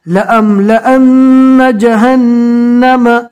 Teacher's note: نون مشدد کا ایک الف کے برابر گننا ہوگا